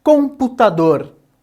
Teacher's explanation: no caso de computador, dor é a sílaba mais forte. Nós então consideramos essa uma palavra oxítona.